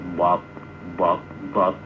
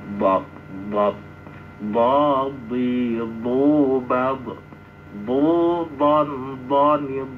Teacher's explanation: Dot itu keluarnya dari gigi geraham ya, dari pinggir lidah baik kanan dan kiri menyentuh gigi geraham depannya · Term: huruf dot